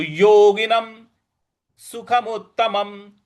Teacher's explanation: न पर अनुस्वार है जो अनुस्वार है उसका उच्चारण हम म करेंगे